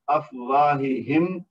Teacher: واو کے بعد الف ہے جو کہ الف مد بنے گا، تو یہ اس کو دو حرکت تک کھینچ کر پڑھیں گے۔ افواہہم، آخر میں جو میم ہے اس کا اظہار شفوی ہوگا